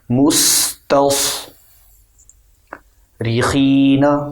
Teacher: سین کو باریک رکھیں، سخت پڑھیں، اور صاد کو سختی کے ساتھ موٹا کریں